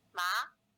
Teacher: a second tone, which is a mid-rising tone with a 3-5 contour